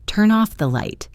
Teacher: In natural speech, this becomes turn off the light. The N from turn links to the O from off. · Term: linking